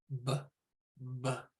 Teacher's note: B is bilabial, meaning we take both lips and we, the sound is made using both lips in short plosive pushes of air and a slight vibration at the back of the throat